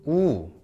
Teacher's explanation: you have the sound oh like this that's o okay and you push your lips even more forward and the sound becomes ooh